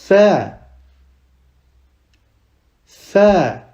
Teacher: on doit mettre la langue entre les dents